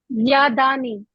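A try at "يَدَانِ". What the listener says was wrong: یادانی نہیں بنے گا، یدانی بنے گا. آپ ایک اور الف کا اضافہ کر رہی ہیں بیچ میں. ادھر آپ نے ایک اور الف لگا دیا تھا. یدانی، بس یہ بنے گا. یدون سے یدانی.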